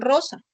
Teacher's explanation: a veces representa la vibrante múltiple cuando está el inicio de palabra